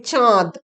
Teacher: না তৎসম শব্দ যখন বাংলা শব্দে রূপান্তরিত হয় সেই সময় তৎসম শব্দের যে নাসিক্য ব্যঞ্জন অর্থাৎ উ ইঙ্গ মূর্ধন্য দন্তন্য ম এবং অনুস্বর ইত্যাদি লুপ্ত হওয়ার সঙ্গে সঙ্গে তার ঠিক আগের অর্থাৎ পূর্ববর্তী স্বরধ্বনিটি আনুনাসিক হয়ে যায় এবং তাকেই বলা হয় নাসিকী ভবন বা ন্যাজালাইজেশন